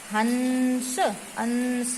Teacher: जो हम स्पर्श व्यंजन बोलते हैं, जो यहाँ पर जो शो हो रहे हैं स्पर्श व्यंजन, इसका ये 5वां जो भी वर्ण है ये सभी हमारा अनुस्वार में यानी इन्हें बोलने में हम नाक का प्रयोग करते हैं, तो ये अनुस्वार में आ जाता है और अपने से पहले आने वाले व्यंजन के ऊपर लगाया जाता है।